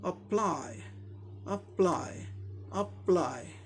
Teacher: ये वर्ब है इसीलिए सेकंड सिलेबल पे स्ट्रेस है, इसे जोर देके बोलना है। अप्लाई, अप्लाई, अप्लाई, ऐसे बोलना है।